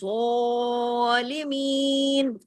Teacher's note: اب زو کو ہم نے کھینچا کیوں الف کے برابر؟ اس لیے کہ اس کے اوپر کھڑی زبر ہے